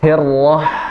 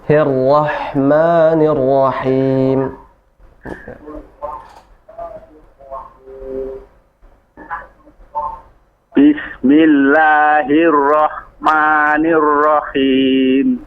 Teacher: huruf ha kecil kalau dia disukunkan maka nafasnya mengalir